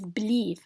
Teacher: it is stressed in the second syllable because the first syllable has a schwa and the schwa is unstressed